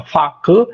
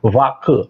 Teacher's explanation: a fricativa surda ou sonora no início é a grande diferença